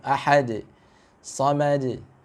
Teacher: Lalu sudah kol-kolahnya sedikit lagi diperbaiki ya, jangan sampai bunyinya condong ke e ya. Jadi kalau bisa itu bunyi kol-kolahnya dengan fathah ya, fathah yang murni gitu.